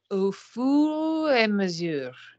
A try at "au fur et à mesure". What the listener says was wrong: There's no four, nothing is in the oven. Au fur et à mesure. Au fur et à mesure. Au fur et à mesure.